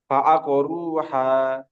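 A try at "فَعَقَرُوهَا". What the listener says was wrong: আপনার আবার ভিতরে চলে যাচ্ছে, ফাআকরুহা। হা এই জায়গা নয়, আপনার যে জায়গা থেকে হা উচ্চারণ করছেন ওর আরেকটু ভিতরের দিক যাবে, ভিতর থেকে একটা গম্ভীর আওয়াজ ভিতর থেকে বার করে না, ওই রকম ভাবে ফাআকরুহা।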